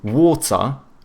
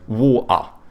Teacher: Whereas like the British, they tend to have either hard T's or they do like the glottal T, so but then they do a schwa instead of pronouncing the R · the British, they tend to have either hard T's or they do like the glottal T, so but then they do a schwa instead of pronouncing the R, so they say water or they say water.